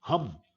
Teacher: हिंदी का शब्द हम, अब हम में है जब हम बोलते हैं तो एक बिल्कुल खांसी जैसी हवा, तेज हवा हमारे गले से निकलती है, हम, तो वो ग्लोटल का एग्जाम्पल है।